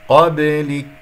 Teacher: من قبلك، الباء مقلقلة قلقلة صغرى في وسط الكلام، أقف على كاف ساكنة مهموسة